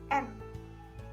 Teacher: Dan huruf ketiga yaitu N, konsonan nasal alveolar. Pengucapannya dengan rongga mulut dan gigi terbuka dan ujung lidah menyentuh langit-langit mulut dengan sedikit penekanan pada lidah